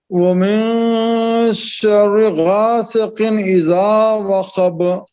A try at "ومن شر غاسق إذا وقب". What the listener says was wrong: देखिए इसको शर्र नहीं बोलेंगे शर्री बारीक है बिल्कुल दोनों रा शर्री शर्री